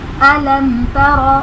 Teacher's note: میم ساکن کے بعد حرف با اور میم کے علاوہ ہمارے پاس تا آ رہا ہے تو اس لیے یہاں پر اظہار شفوی کا قاعدہ ہوگا، یعنی اس میں ہم غنہ نہیں کریں گے